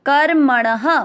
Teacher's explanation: ण में अ की मात्रा तो विसर्ग को पढ़ेंगे ह